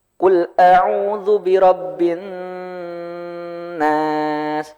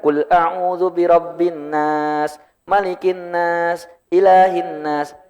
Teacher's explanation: Kalau Bapak dan Ibu menemukan huruf nun dan mim bertasydid, nah, nun bertasydid atau mim bertasydid, ini tolong ditahan dulu agak lama. Ya sekitar berapa detik lah.